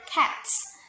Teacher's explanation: so the s sound become the ts sound because of the voiceless t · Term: progressive assimilation